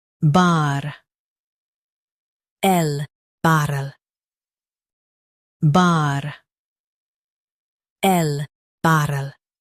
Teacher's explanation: Stress burr and keep ul light.